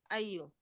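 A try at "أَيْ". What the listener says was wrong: Ai itu dia disukun ya. Ai Naam, ai saja. Ai itu disukun. Ya itu disukun. Ai ya, Enggak. Ai. Beda. Kalau ayu itu dia kata tanya, ya. Nah, kalau ini ai, ini untuk tafsir, yaitu artinya.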